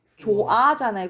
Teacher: 히 탈락은 조건이 뭐냐면 모음으로 시작하는 어미나 전미사 앞에서 탈락하는 거야